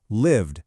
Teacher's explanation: Live ends in that vibrating v sound, so we say lived.